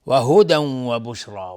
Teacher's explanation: و هدی و بشرا تنوین بعدش واو ادغام با غنه